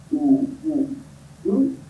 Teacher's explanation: U is the sound that is coming from the center of the tongue.